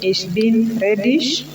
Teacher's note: You will note that the G has got a sh sound when it is at the end of a word.